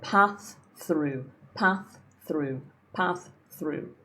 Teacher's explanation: This is tricky because you got a th and a th directly after each other.